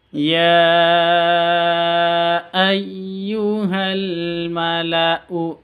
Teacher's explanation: Mad jaiz munfasil. Ya ayyuhal mala'u ini u-nya pendek meskipun ada alif di sini.